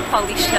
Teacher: in Portuguese language they always add like a sh sound when it's a st sound